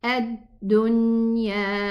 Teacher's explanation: The noon has bayniya, it's tawassut, so it needs a little bit of time in its exit until the ghunna sound is complete.